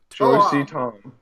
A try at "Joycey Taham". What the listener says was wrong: Toham is an H. There's an H. The H is not silent. Taham. Joycey Taham.